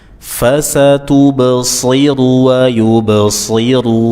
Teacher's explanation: dibaca dengan memonyongkan bibir dan nunnya dibuka infitah